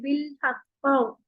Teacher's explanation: हर्फ पे अगर हम वक्फ करेंगे तो सबसे फर्स्ट ग्रेड का कलकला होगा, बहुत ज्यादा गूंजदार, जैसे बिल हक, है ये ना, इसकी कलकला की जो आवाज है वो सबसे ज्यादा होगी।